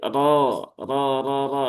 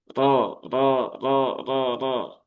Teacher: huruf ro ujung lidah di langit-langit depan, dia bukan agak ke belakang. Kalau dibaca ro, ro, ro, ro, ro, nah, itu dia terlalu ke belakang.